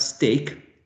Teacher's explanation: We have t not in initial position, but in middle position. This sound is unaspirated because there's not that extra puff of air.